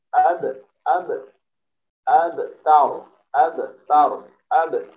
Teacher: Ba sukun dibaca qalqalah atau dipantulkan suara pantulnya ba.